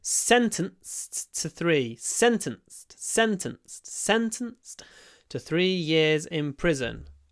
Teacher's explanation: Remember that after a s, the D is pronounced t